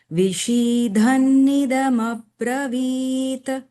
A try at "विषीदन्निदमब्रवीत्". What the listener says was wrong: There is no Mahaprana here. विषीदन्निदमब्रवीत्।